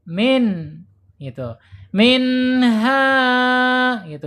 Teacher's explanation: Minha, haknya dibaca panjang. Secara hukum namanya mad tabi'i ya. Panjangnya 2 harokat atau 1 alif ya.